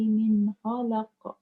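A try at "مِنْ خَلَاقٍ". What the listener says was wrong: Khalaq. Ada alif tu kan? Dia jadi mat arid sukun.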